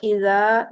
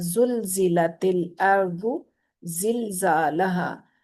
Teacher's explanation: इज़ा जुलजिला, तो इज़ा का जो जाल है और जो जुलजिला का जा है, इन दोनों में फर्क है ना। जाल जो है वो नरमी से अदा होने वाले हरूफ में से है, और जा जो है वो सीटी वाले हरूफ में से